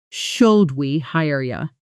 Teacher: The phrase, "Should we hire you?" often compresses in fast speech to something closer to should we hire you with you softening into yah at the end of casual sentences